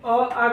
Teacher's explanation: अ, आ का उच्चारण स्थान कंठ होता है। आप लोग कंठ से बोलिएगा, अ कहिएगा तो कंठ से ही आप लोग कहिएगा, कंठ उच्चारण स्थान होगा।